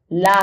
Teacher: पार्श्विक व्यंजन ल है।